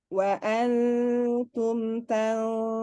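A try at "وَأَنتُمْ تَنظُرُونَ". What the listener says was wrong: Ditahan lagi, gunahnya tahan lagi.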